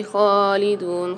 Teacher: خا کے اوپر کھڑا زبر آ رہا ہے، اس کو ایک الف مدار کھینچ کے پڑھیں گے. پھر دال کے ساتھ واو مد آ رہی، تو یہاں پر بھی دال کو ایک الف مدار کھینچیں گے.